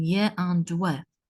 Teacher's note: there is no clear-cut obstruction to the flow of air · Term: approximant consonants